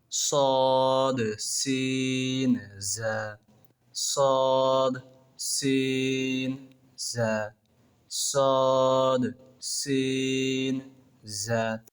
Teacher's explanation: জিহ্বার আগা সামনের নিচের দুই দাঁতের আগার সঙ্গে লাগিয়ে